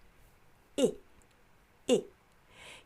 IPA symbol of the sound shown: ɪ